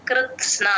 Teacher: త కింద స ఒత్తు న ఒత్తు రెండు వినిపించేటట్టు చెప్పాలి